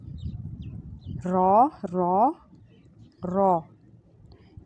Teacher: را میں ہلکی سی تکرار ہوگی